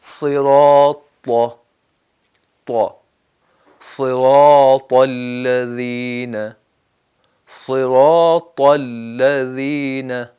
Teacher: تو طا کر کے ہونٹوں کو گول نہیں کرنا، طا بس، ٹھیک، بالکل سیدھے رہیں اور اندر سے زبان اور سامنے والے دانتوں کی جو جڑ ہے وہ استعمال کریں۔